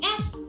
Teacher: F it's flowing the air is continuously coming out